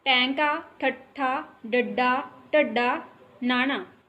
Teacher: ਜਦੋਂ ਸਾਡੀ ਜ਼ਬਾਨ ਉਲਟੀ ਹੋ ਜਾਵੇ ਤਾਂ ਉਸ ਨੂੰ ਉਲਟ ਜੀਵੀ ਕਹਿੰਦੇ ਆ